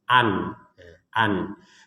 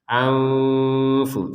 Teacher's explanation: Jadi ada unsur dengungannya tadi tidak 100% dengung. Namanya juga samar kan gitu.